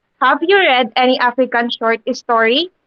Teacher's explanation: since the question is answerable by yes or no, that's why there is a rising intonation